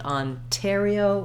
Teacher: And here we don't have any option because we have, again, an NT. This time we do always say that T sound Ontario with that puff of air because it starts the stressed syllable.